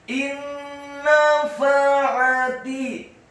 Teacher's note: Apabila ada nun yang sukun atau tanwin, dalam hal ini adalah nun yang sukun bertemu dengan huruf-huruf idgham bi gunnah, mim, nun, waw, dan ya, maka hukum bacaannya adalah memasukkan dengan dengung, idgham bi gunnah.